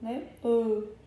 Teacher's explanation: a úvula, ela se aproxima mais, da língua, o ar, ele se divide entre a boca e o nariz, e aí no nariz ele passa, pelas cavidades nasal, e aí conseguimos, produzir aquele som nasal.